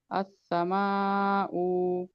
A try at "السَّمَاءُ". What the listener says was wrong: آپ کی آواز سلو آ رہی، دیکھیے پہلے آپ اپنا والیوم بڑھائیے، اور جو آپ یہ صرف جو ہے پیش ہے نا، تو پیش کو نہیں کھینچنا، یعنی حرکات کو جلدی پڑھنا، حرکات کو نہیں کھینچنا. السماء، اس طرح.